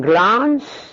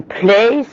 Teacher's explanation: Phoneme L in glance is fully voiced. In place it's devoiced.